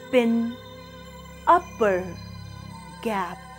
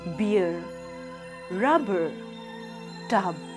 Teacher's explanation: P and b are bilabial stops, which means in the production of these sounds, air is built up behind the two lips and then released. For example, the letter P in words like pin, upper, gap, and letter B in words like beer, rubber, tub.